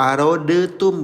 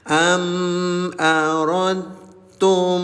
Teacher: Jika Dal sukun bertemu dengan huruf Ta, maka dibaca bukan dengan pantulan Qalqalah seperti "arodettum," melainkan langsung menyatu dengan huruf Ta. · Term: Idgham Mutajanisain